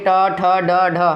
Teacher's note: ट वर्ग के जितने भी होते हैं उनका मूर्धन्य से बोला जाता है ना, मूर्धा से बोला जाता है।